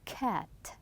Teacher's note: We are stopping it twice. K and t.